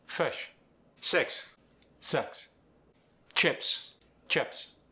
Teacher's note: The short I goes to the schwa sound.